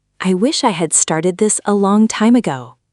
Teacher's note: Notice how wish I links smoothly, almost like wishy. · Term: linking sounds